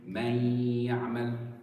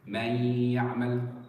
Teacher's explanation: I made the ghunna, and I spent my emphasis, the two harakas there, on the ya. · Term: idgham